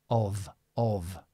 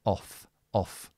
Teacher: Only your voice. So this is with your voice, of, of. Without your voice, off, off.